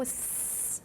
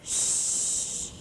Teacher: So you see the s part, this is the frequency. You see it's darker in a higher frequency region. And then for the sh, it's kind of lower. So that's how your ears can tell the difference between s and sh.